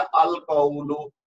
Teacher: तो वो उसी रूल के तहत एक तो पहले अलिफ लाम लगा, दूसरा लाम की एक तन्वीन गिर गई, तो ये बन गया अल कौलु। तो अल कौलु जब हम कहेंगे तो इसका मतलब ये कमरी है, क्योंकि लाम की आवाज आ रही है